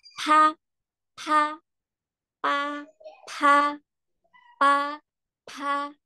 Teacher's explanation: Betul jadi berubah menjadi P PH ada nafasnya ya kan